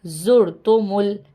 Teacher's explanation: میم کو لام سے ملایا ہے